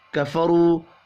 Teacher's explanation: را کو پر پڑھیں گے، واو مدہ ہے، ایک الف کے برابر کھینچ کر بھی پڑھنا ہے